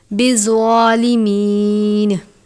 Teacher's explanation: زا کو سختی سے پڑھتے ہیں اور زوا کو ہمیشہ پر پڑھتے ہیں کیونکہ ذوا حرف مستعلیہ میں سے ہے